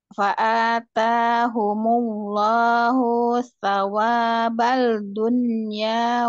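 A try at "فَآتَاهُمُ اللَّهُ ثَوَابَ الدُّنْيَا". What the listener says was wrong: sawabat dunia, bukan bal dunia, bad dunia kan itu kok maksudnya.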